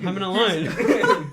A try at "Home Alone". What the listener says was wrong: He's at home alone, not he is a home and he's alone.